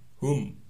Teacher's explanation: ada mim sukun bertemu ya, namanya idhar safawi, mimnya dibaca jelas tanpa berdengung